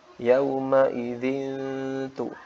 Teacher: Yauma idzitu, itu faedah dari ikhfa ya. Jadi nunnya disamarkan biar tidak melebur atau masuk ke huruf ta secara langsung.